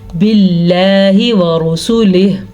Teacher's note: را کو ہم نے پر پڑھا ہے کیونکہ را کے اوپر پیش ہے